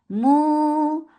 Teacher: circle lips make it two counts long without going into nose. S two counts long.